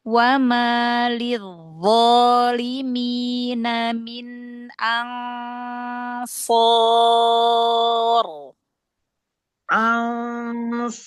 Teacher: nun yang kedua, nun ketemu shad, ikhfa tebal.